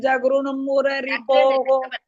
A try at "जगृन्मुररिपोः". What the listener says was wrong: ஜ கிடையாது சக்ரன் ஜ கிடையாது ச.